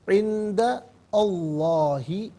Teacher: عند میں دال پر زبر کو لفظ اللہ کی لام کے ساتھ ملائیں گے، درمیان سے حمزہ یعنی الف کو حذف کیا جائے گا۔ لفظ اللہ کی لام سے پہلے والے حرف دال پر زبر ہے، لفظ اللہ کی لام سے پہلے والے حرف پر زبر یا پیش ہو تو پر پڑھتے ہیں، زیر ہو تو باریک پڑھتے ہیں، یا زبر ہے تو پر کر کے پڑھا جائے گا۔